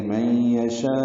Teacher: نون ساکن کے بعد یا آنے کی وجہ سے ادغام ناقص ہے، غنہ ہوگا